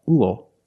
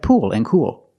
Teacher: They all have the oo sound plus a dark L, ool, like pool and cool. But remember, with fuel, we have the same spelling pattern, but the pronunciation is a little different.